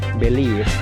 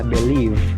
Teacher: Bedanya cuma suara terakhirnya yaitu F sama V. Kita awali lagi, believe, singkat ya, dan suaranya ringan, F-nya ringan, believe.